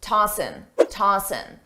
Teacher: commonly a native speaker will drop the G sound on tossing